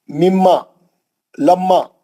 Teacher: हम मीम साकिन को सख्ती से दूसरे मीम में मिला के गुन्ने से पढ़ेंगे, क्योंकि 2 मीम हो गए। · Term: इदगाम शफी